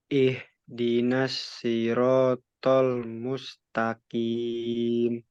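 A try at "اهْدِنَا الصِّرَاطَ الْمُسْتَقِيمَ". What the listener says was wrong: Tebalkan lagi shot.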